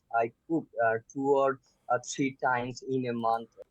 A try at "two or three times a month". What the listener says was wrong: Two or three. So missing this th sound. Two or three times.